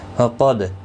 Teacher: قاف مستعلیہ ہے، پر پڑھا جائے گا، دال ساکن پر کلا ہوگا۔